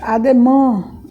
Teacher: a gente procura pronunciar o som anasalado pelo nariz